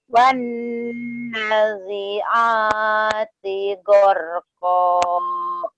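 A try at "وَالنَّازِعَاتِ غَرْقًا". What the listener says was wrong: Naknya panjang ya Teh ya. Wana, coba panjangin lagi. Wan nazi'ati gharqa.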